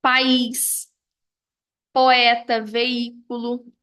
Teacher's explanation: de duas vogais pronunciadas em sílabas separadas